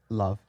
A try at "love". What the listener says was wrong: They're almost saying loaf.